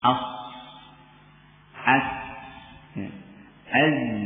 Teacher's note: dikatakan huruf safir karena berdesis ketika mengucapkannya keluarnya huruf ada desisan